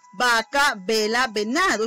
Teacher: Entonces, afirmamos que la V no es labio dental.